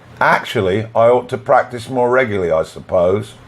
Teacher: Here we add y between I and ought, and we add y between regularly and I.